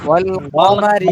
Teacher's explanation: কমাতে মনে হয় টান হয়ে গেছে, আর একটু সংক্ষেপ হবে।